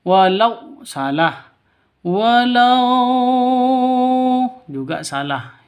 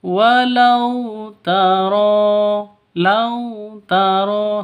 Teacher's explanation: lau sifat lin, lentur, lemes. Tidak boleh disentak, tidak boleh dipanjangkan.